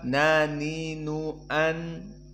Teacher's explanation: dan sifatnya adalah jahr dan makna jahr tidak ada nafas yang keluar